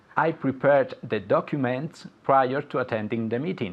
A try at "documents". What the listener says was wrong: So, documentos, the pronunciation, documents. Okay, la C-U ahí sounds like you're saying the letter Q, la letra Q, okay? Documents. I prepared the documents prior to attending the meeting.